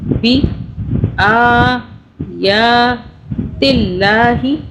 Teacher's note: اللہ کو باریک پڑھا، اللہ سے پہلے تا کے نیچے زیر آ رہا ہے، بی آیات اللہ، بی آیات اللہ لہم، یہاں پہ دھیان سے پڑھنا ہے، پچھلے حرف کو کھینچنا نہیں ہے۔